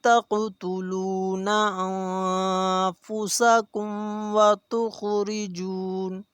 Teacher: نون ساکن ہے، یہاں پہ اخفا کیا جائے گا، آواز کو ناک میں لے کر جائیں گے